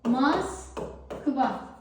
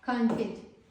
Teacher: Rus və Avropa mənşəli sözlərdə o saiti ilə yazılır, A kimi tələffüz olunur. Yazırıq Moskva tələffüz olunacaq.